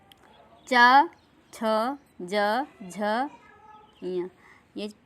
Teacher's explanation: चा, तो चा जब बोलते हैं तो हमारी जीभ जो है वह तालु में टच करती है, इसकी आवाज़ तालु के माध्यम से आती है। च, छ, ज, झ, ञ, ये 5 व्यंजन वर्ण चा वर्ग के हैं, इनको तालु से बोलते हैं।